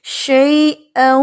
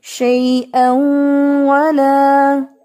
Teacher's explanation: او کرتے ہوئے ناک میں آواز جاتی ہے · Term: غنہ